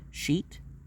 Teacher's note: the sound of the palatal sibilant, which is that of sh